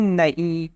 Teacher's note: یہاں بعد والے نون کی آواز ناک سے نکلتی ہے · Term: نون غنہ